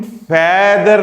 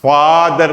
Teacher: फादर में हम फैदर नहीं कह रहे हैं, हम फादर कह रहे हैं, जिसे हम हिंदी में बड़ा आ कर कह देते हैं